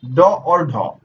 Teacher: अब देखिए आपका अगला दिया गया है उच्छिप्त या फिर द्विगुण व्यंजन। जिन वर्णों के उच्चारण में जिह्वा के अगले भाग को थोड़ा ऊपर उठाकर फिर नीचे गिराया जाता है वे कहलाते हैं उच्छिप्त।